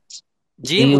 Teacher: কোথা থেকে উচ্চারণ হয় বলা হচ্ছে জিহ্বার মধ্যখান ভালো করে বোঝেন জিহ্বার মধ্যখান উপরের তালুর সাথে লাগাইয়া উপরের তালুর সাথে লাগাইয়া উপরে উচ্চারণ সাথে লাগাইয়া জিম উচ্চারণ হয়